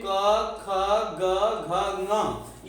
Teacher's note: तो हम यहाँ देखते हैं कि जो क वर्ग है तो क वर्ग में क, ख, ग, घ, ङ ये कंठ से उच्चारित होते हैं। हमारी जो श्वास है वह कंठ से बाहर निकलती है और सीधे आती है।